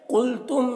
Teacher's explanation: قلتم میم میں اظہار شفوی ہو رہا ہے